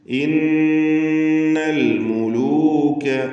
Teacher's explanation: ഇന്നൽ മുലൂക നൂൻ മുഷദ്ദദ മണിക്കണം.